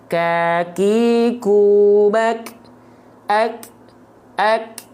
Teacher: Kaf itu hanya berupa percikan-percikan nafas ya percikan nafas saja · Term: sifat hams